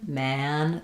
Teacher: For man, it's more open. Man, the front of my tongue is going to be all the way down, the back of my tongue is going to be all the way lifted.